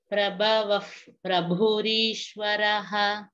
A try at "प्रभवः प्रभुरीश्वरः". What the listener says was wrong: Bhagini, Prabhavav, that bha has a mahaprana.